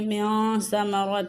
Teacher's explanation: اخفا کا قاعدہ ہو رہا ہے، نون ساکن کے بعد حروف اخفا میں سے سا آیا ہے۔